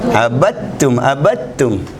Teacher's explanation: دال لکھا گیا، پڑھا نہیں گیا. کیوں نہیں پڑھا گیا؟ تا اور دال دونوں قریب المخرج ہیں. اگر تا سے پہلے دال ساکن آ جائے تو یہ تا لکھا جائے گا، پڑھا نہیں جائے گا.